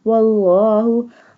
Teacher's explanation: Bold the Allah word because before Allah word is waw, and waw has a fatha sign.